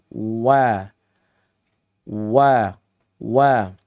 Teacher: wau ini Dibaca dengan keadaan bibir yang bulat membulat begitu ya. · Wa-nya ini adalah maudhi'us syafatain, yaitu huruf yang keluar dari dua bibir. Makanya wa atau waw ini dibaca dengan keadaan bibir yang bulat, membulat gitu ya. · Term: maudius syafatain